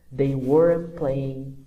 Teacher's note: para muitas vezes não ouvir o t desse wasn't e weren't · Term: connected speech